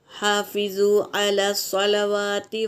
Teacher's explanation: ہا میں الف مدہ ہے اور فا حرکت ہے اور زو میں واو مدہ ہے۔ ہا ہوا کے ساتھ نکالیں گے، حلق سے نکالیں گے۔